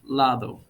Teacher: this doesn't sound like a hard d it's lado more like a th sound